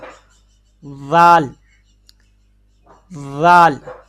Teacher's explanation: ذال کا مخرج ہے زبان کی نوک اوپر والے دونوں دانتوں کے سرے کے اوپر ہلکا سا